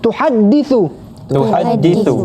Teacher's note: Jadi ha pedas kat sini di tengah halkum. Jangan baca tuhaddisu.